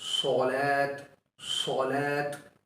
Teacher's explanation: جب قرآن کریم کے اندر صاد آتا ہے تو اسے نارمل سواد کی طرح نہیں پڑھا جائے گا، بلکہ اسے موٹا پڑھا جائے گا۔ موٹا مطلب یہاں پر اس کی مثال صلات، صلات، اس کی مثال صاد کی مثال صلات، صلات۔